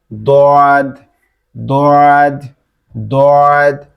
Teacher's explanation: আর দতটা হচ্ছে এই জিহ্বার ডান সাইড, এই সাইডের কোন একটা দাঁতের সাথে লাগবে, মাড়ির দাঁতের সাথে, জিহ্বার ডান দিকের উপরের মাড়ির সাথে লাগবে, লেগে উচ্চারিত হবে